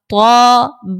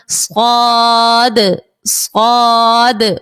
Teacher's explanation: طا دیکھیں موٹا پڑھ رہی ہوں کیونکہ حروف مستعلیہ کا ہے